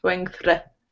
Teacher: your TH is okay, but when you get to the R, you're rolling your tongue a little bit.